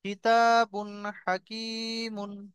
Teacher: এই কিতাবুন বলে গুণনা হবে না, বিনা গুণনায়, গুণনা না করে তাড়াতাড়ি পড়তে হবে।